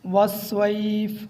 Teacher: وقف کرتے وقت آخر میں فا کی آواز آئے، سواد موٹا پڑھنا ہے۔